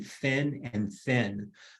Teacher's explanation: The sounds like the F and the TH, the difference between fin and thin, those sounds, you really can't project the F and the TH much more than a soft whisper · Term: soft consonants